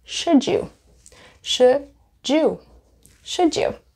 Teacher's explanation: the D and the Y will make a j sound